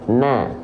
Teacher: Karena nun di sini dia tetap dibaca na, tidak menjadi no, maka dia adalah huruf yang tipis.